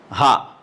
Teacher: اب اس کے اندر جو حرف ہمیں سیکھنا ہے وہ ہا اور ہا میں فرق ہے. یہ ہا ہے، یہ ہا جو آخری حلق سے نکلتا ہے